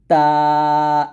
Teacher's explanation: জিহ্বার আগা সামনের উপরের দুই দাঁতের গোড়ার সঙ্গে লাগিয়ে তা পাতলা করে উচ্চারণ করব